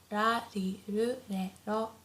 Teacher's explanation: Pay attention here that the R sound is not as harsh as in English, so it's not like r, not like R, but it's very soft in between L and R. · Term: R line